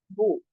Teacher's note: जैसे वाव अदा करते हैं, होठों को गोल होना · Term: पेश